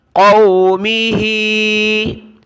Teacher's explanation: ہا کے نیچے کھڑی زیر ہے تو ہا کو نیچے کی طرف کھینچنا ہے، ایک الف کی مقدار۔